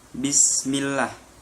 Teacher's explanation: Di situ terdapat hukum bacaan tarkib karena lafaz Allah didahului oleh huruf hijaiyah, yakni huruf mim yang berharokat kasroh. Cara membacanya dibaca tipis.